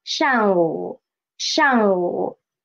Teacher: 午 should be a half third tone